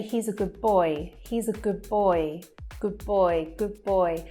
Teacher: So again, that D, the D sound completely disappears, or in fact, it changes to a B sound to join on to the next word